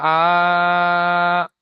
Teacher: খাড়া জাবার আলিফ মাদ্দার সমান, এই জন্য একে আলিফ মাদ্দাহের মতো এক আলিফ পরিমাণ টান দিয়ে পড়তে হবে।